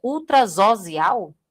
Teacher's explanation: quando eu tenho duas vogais e o S vem no meio da palavra, ele fica com som de Z.